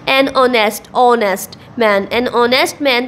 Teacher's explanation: the letter H is silent and the opening sound is of a vowel